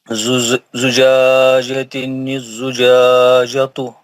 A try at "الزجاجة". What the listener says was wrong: نہیں کیوں اس سے زیادہ لام ہے نا، الزجاجہ لام ہے وہاں